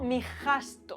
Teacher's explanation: Es decir, que hay grupos de consonantes que se funden. SB se funde en F, lo banco. SG se funde en J, mi gasto. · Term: fundición de grupos consonánticos